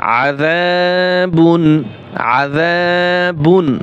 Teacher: এক আলিফ টান হবে আজা বা দুই পেশ বুন আজাবুন আজাবুন বুন গুন্না করা যাবে না